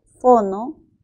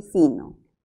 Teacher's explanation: Bueno, aquí la diferencia está en el desplazamiento. Efectivamente, la O es una vocal posterior y la I es una vocal anterior.